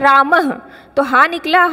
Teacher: तो ये जो हमारा विसर्ग है वो कैसा उच्चारण करता है ह की तरह